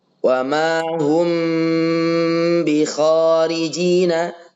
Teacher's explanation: tanpa tekanan. Mimnya disamarkan suaranya.